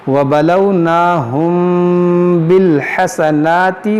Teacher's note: میم ساکن کے بعد با ہے, یہاں پر اخفاء شفوی ہوگا, یعنی یہاں پر غنہ کریں گے